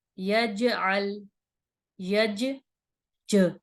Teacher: دیکھیں جیم کی آواز پلٹ کر آ رہی ہے